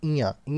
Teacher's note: जो नाक से बोला जाए साथियों तो वो हो जाएगा आपका ञ। इयां आपको बोल के देखिए तो आपको नाक पे जोर आएगा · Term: नासिक्य व्यंजन